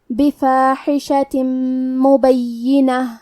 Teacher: میم حروف الادغام بغنہ میں سے ہے تو ہم یہ حکم کو غنہ اور تشدید کے ساتھ ادا کریں گے